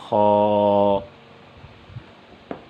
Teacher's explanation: خا، خا کو بھی ایک الف کے برابر کھینچ کر پڑھیں گے، اور خا کا مخرج، خا کی ادائیگی کی جگہ وہ حلق کا اوپر والا حصہ ہے جو منہ کی طرف ہے، وہاں سے خا ادا ہوگا، خا۔ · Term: حرف خا